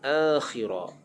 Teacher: A menjadi mad badal dipanjang 2 harakat